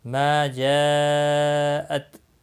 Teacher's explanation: جا مد متصل ہے، 4 الف کے برابر کھینچ کر پڑھیں گے۔